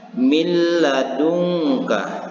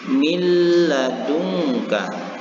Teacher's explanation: membaca huruf lam ini seolah-olah bertasydid · nun matinya atau nun yang berbaris sukunnya sudah masuk kepada huruf lam dan membaca huruf lam ini seolah-olah bertasdid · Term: idgam bilagunnah, idgham